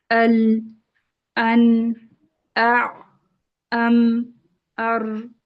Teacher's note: ان حروف کو ادا کرتے وقت آواز میں نہ تو شدت کی طرح سختی ہوتی ہے اور نہ رخاوہ کی طرح نرمی ہوتی ہے، بلکہ درمیانی حالت میں درمیانی حالت ہوتی ہے۔ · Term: حروف متوسطہ